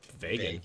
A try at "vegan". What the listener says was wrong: You turn the E to an A. That doesn't even sound right.